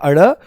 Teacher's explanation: जीभ ऊपर उठकर इसी मूर्धा वाले स्थान पर लगती है, और फिर झटके के साथ नीचे आती है